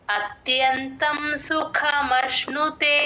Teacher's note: సుఖలో క కి మహాప్రాణం ఉందండి గమనించండి